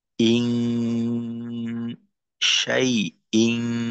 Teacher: ইন না পড়ে অনুস্বরের মতো গুণনা করতে হবে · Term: ইকফার গুণ